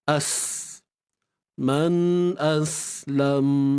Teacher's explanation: untuk sin, lepaskan suara dan nafas, jangan simpan